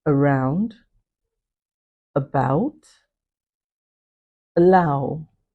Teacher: at the beginning of these words, a vowel is weakened to the point that it is deleted. Okay. This happens most especially in the speech of native speakers. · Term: vowel deletion